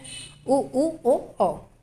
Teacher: ओठों की स्थिति उच्चारण के समय गोलाकार होती है, इसलिए वृत्तमुखी है